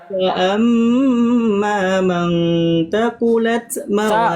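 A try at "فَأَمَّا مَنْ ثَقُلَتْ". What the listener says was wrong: Sa itu titiknya 3 itu bukan tak. Sakulat. Kau tadi tak. Fa amma man sakulat sa bukan tak. Iya, sa kan titiknya 3 itu. Sa kan bukan tak.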